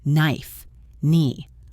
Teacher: You do not pronounce the K. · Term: silent K